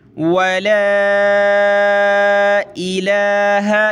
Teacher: वला इलाहा, ये लाम के ऊपर खड़ा ज़बर, तो खड़ा ज़बर को एक अलिफ की लिमिट में हमने खींचना है